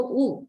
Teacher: oo is a back vowel, right?